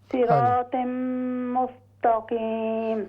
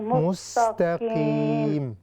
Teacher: مستو نہیں ہوگا، تا باریک ہو جائے گی